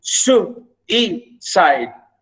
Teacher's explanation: a stressed syllable followed by 2 unstressed syllables. Like we say suicide. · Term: dactyl